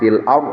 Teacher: Fil ardh ada alif lam qamariyah, fil ardh ada ro sukun setelah fathah maka tebal